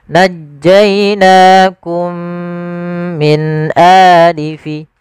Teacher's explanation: Cara membacanya yaitu kita masukkan mim yang pertama kepada mim yang kedua, kemudian ditahan dengan gunnahnya. Najjainakum min a, jangan najjainakum min a, tapi ditahan. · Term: idgham mimi